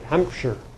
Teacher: it's a schwa with a little r in it.